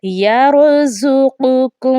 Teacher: قاف ہے، اس کو موٹا پڑھا جائے گا، اور کاف اس کو باریک پڑھا جائے گا۔ 2 نقطے والی قاف کو حلق کے درمیانی حصے سے ادا کیا جائے گا، جبکہ حلق کے اوپروی حصے سے کاف کو ادا کیا جائے گا۔